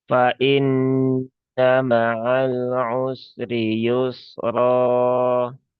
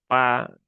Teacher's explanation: jangan sampai huruf fa ini berubah menjadi p ya, sehingga terbaca pa, karena ada beberapa sahabat kita yang logatnya huruf fa itu berubah menjadi pa.